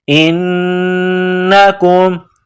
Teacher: انکم, حمزہ کو نون کے ساتھ ملانا ہے. نون مشدد ہے تو ناک میں آواز پیدا کرنی ہے